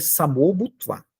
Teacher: Samar Bhutva, não, você nunca vai ouvir esse som em sânscrito. Você vai ouvir Samor Bhutva, porque o Visarga, ele vira o.